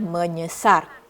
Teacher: dia akan tukar S menjadi NY, itu bunyi sengau yang artikulasi yang sama dengan S. Sama daerah artikulasi dia.